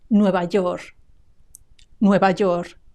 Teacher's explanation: Have you noticed that I dropped the final K?